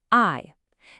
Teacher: You're literally just gliding from the a sound into an e sound. It sounds just like the English word I. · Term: compound final